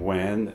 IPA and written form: wɛn (when)